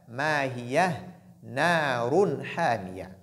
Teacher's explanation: Il y a tanwin aussi suivi de ha, il y a ce qu'on appelle al-idhar. Donc la clarification, ha fait partie des lettres de al-idhar.